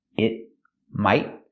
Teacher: The T in it is a stop T. It might. The T in might is also a stop T.